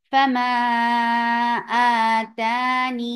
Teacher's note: لیکن اس کو وقف کرنے کا طریقے دو ہیں۔ اس میں اثبات الیا، یعنی یا ساکنہ پڑھا جائے گا